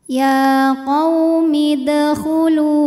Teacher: Dal ini hukumnya adalah qalqalah sugro, karena huruf qalqalahnya ini sukunnya asli dan ada di tengah bacaan. Maka dibacanya memantul dengan pantulan yang kecil.